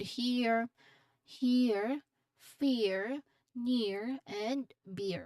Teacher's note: This is a gliding vowel. It starts with a short E and glides towards the schwa sound. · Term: diphthong